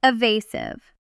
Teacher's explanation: The stress is on the second syllable, and that A sound is a long U.